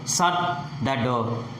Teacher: Here shut is the focused word or the content word. Shut the door. The pitch falls at the end.